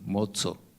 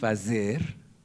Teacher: es una pequeña oclusión antes de la pronunciación y por lo tanto la consonante me sale sorda